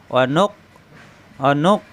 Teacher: একটা ধাক্কার মত হবে কিন্তু কল কালার ধাক্কা না এটা গলার ভিতরে আটকে যাবে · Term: হামজা